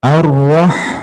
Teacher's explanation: Ha itu tadi makhrajnya di tengah tenggorokan, sama kayak ain, tempatnya sama. Ha itu bersih, tidak ada kecampuran, dengkurannya kayak huruf kha.